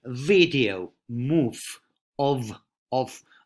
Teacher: you got to do a labio-dental movement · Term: English V